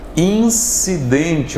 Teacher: O N está nasalizando a letra I.